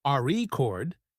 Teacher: if you stress the first syllable re chord it's a noun but if you stress the second syllable record it's a verb